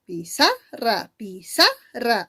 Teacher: Pi y ra serían las sílabas átonas. Y en el caso de sa sería la sílaba tónica. · La mayor fuerza está en sa.